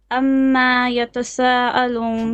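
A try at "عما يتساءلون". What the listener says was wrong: Now, the meme, okay, is a short vowel. Amma. Now, the sa has a mud here. You have to make it 4 or 5 beats. Don't stretch the meme. Amma. No, ayn. Amma yatasa'alun. No, you're saying amma.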